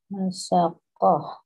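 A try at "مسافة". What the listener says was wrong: Fa, fa, bukan kok. Masafatun.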